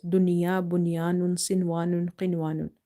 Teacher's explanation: So this is after noon sakin's letter ya, but we are not doing any idgham here. We are reading it like if izhar, like without suppressing or without doing nasalization, just clear. Okay, because this is a one word. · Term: izhare mutlaq